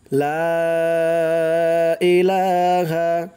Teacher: লা তিন আলিফ টান দিতে হবে